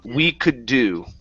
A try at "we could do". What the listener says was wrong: with your lips on the oo, move your lips together instead of d, do. Finish the oo sound.